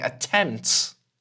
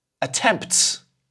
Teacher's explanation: I'm actually not using that p